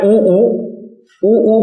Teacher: इनके उच्चारण में होठ गोलाकार हो जाते हैं, जैसे ऊ करेंगे तो होठ गोल ही हो जाएंगे। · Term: व्रतमुखी